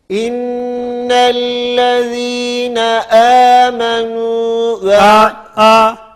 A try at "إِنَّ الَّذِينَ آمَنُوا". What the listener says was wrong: İmaleye kaymasın. E gibi olmasın. Amenu. Bu okumalarda arkadaşlar her halükarda herkesin kendi parmağı iki diş arasına böyle sığacak kadar boşluk olursa imaleden kurtarmış oluruz. Bundan az açtığımız takdirde bütün uzatmalar imaleye dönüşür.